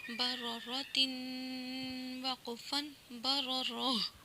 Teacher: یہ جو گول تا ہے یہ وقفی صورت میں ہمیشہ گول ہاں میں بدل جاتا ہے